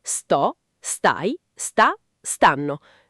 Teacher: Okay, that's regular, but stanno instead of stano. The stress is always on the first syllable in the forms io, tu, lui, loro.